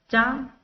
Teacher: चा हमारी तालु से टकरा रही है